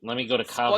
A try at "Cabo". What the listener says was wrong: Did you say Cavo? Cava? Cabo with a B.